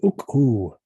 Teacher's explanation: with this U ending, a vowel that copies the vowel of the root, is very Cholan.